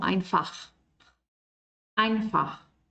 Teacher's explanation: esta CH es un sonido de garganta más en el fondo